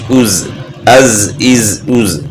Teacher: نیچے دانتوں کے ساتھ ٹچ ہونے کی وجہ سے اس میں سیٹی کی آواز ہوتی ہے